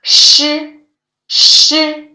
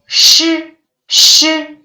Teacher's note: When saying shi, shi, the tongue tip doesn't touch the hard palate.